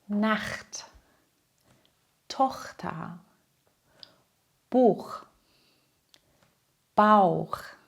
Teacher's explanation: Dieser Laut kommt aus dem Hals, ein bisschen wie ein leichtes „kh“. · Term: Ach-Laut